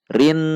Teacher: Rin dibaca dengung, harus panjang, jangan sampai dibaca pendek. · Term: gunnah